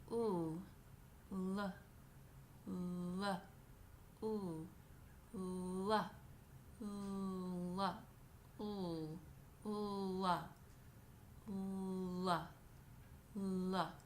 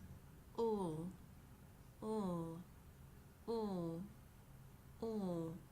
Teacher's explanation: The sound ul is a voiced consonant. This voiced consonant is created by bringing the tip of your tongue back behind your top front teeth. Then you phonate.